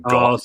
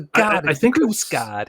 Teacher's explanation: every time they say guard, they're saying god because they don't have the R sound